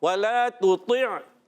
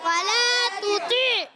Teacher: ولا تطع میں واو کی ادائیگی ہونٹوں کی گولائی سے واو پر زبر ہے, حرکتیں نہیں کھینچیں گے.